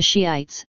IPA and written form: ˈʃiːaɪts (Shiites)